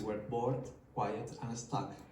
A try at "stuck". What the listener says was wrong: Stuck, not stank, okay? But it's much, much better than the previous time because you're pronouncing the last consonants, which is much easier to understand.